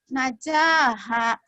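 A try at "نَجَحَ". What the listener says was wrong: Jadi di sini semua masih pendek. Coba lagi dipisah dulu yang di awal itu.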